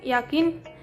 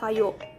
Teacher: Semivokal palatal Y bersuara untuk dibentuk dengan mendekatkan depan lidah pada langit-langit keras tetapi tidak sampai menghambat udara yang keluar dari paru-paru seperti pada kata yakin dan kata kayo.